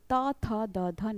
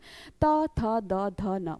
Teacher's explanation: अगर आप अपनी जीभ को दांतों में स्पर्श ना कराएं तो क्या आप ता वर्ग के किसी भी व्यंजन को बोल सकते हैं